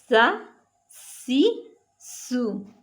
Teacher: सा को सख्ती से और सीटी की आवाज़ में पढ़ना है, बारीक।